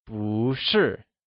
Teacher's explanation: Lets start by going over some of the phrases that you learnt in the last lesson… Student translates to xuésheng While Teacher translates to Lǎoshī You would also recal that bù, becomes bú that is, it changes from fourth tone to second tone, when used alongside another falling, or fourth tone